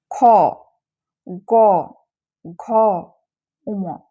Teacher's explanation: এগুলো জীভামূল স্পর্শ করে উচ্চারিত হয় সেজন্য এগুলোকে বলা হয় কন্ঠ বর্ণ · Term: কণ্ঠবর্ণ